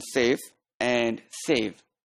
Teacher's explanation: labiodental sounds which are produced when upper teeth is on lower lip